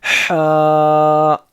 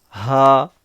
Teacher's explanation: بڑی ہا مطلب اندر سے آئے گا ہا, اور یہ چھوٹی ہا ہلکے سے پڑھ لیں گے ہا